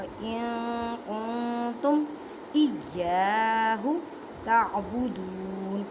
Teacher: نون ساکن کے بعد کاف حروف اکفا کا قاعدہ کریں. اکفا کا مطلب ہے چھپانا